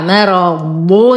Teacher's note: ورقق الميم وأخلصها من تفخيم الراء المفتوحة، مرض، وتم ضمة الضاد مع التفخيم.